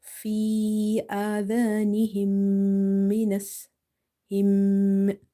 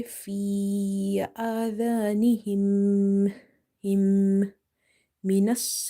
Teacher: This closing the mouth and feeling the buzzing sound and trying to take it in the nose is called nasalization or gunna